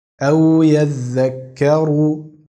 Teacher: أَوْ يَذَّكَّرُ. Das Ra ist dunkel.